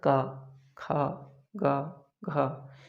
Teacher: तो इनकी उत्पत्ति कहाँ से हो रही है, उच्चारण कहाँ से हो रहा है, कंठ से।